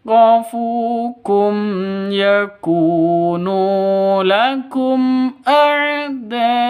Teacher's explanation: Ini mat bertemu dengan hamzah di satu kata, wajib 5 ketukan atau 6 ketukan ya.